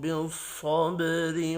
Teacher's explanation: با ساکن پر قلقلہ کرنا ہے۔ را کو زیر کی وجہ سے باریک پڑھیں گے۔ صاد حروف مستعلیہ ہے، پر پڑھیں گے۔ · صاد حروف مستعلیہ ہے، پر پڑھا جائے گا۔ با ساکن پر قلقلہ کرنا ہے۔ را کو زیر کی وجہ سے باریک پڑھیں گے۔